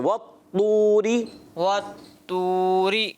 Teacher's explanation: وط یعنی طا کو اور موٹا کرنا ہے